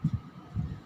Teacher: चंद्र बिंदु। जैसे चांद, चांद हम बोल रहे हैं तो हमारे गले से और नाक से आवाज निकल रही है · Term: अनुनासिक